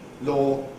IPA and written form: lɔː (law)